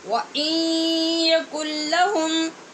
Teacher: اور کن نون ساکن کے بعد لام، یہ بھی حروف یرمالون میں سے، یہاں بغیر غنّے کے ہم نے ادغام کیا.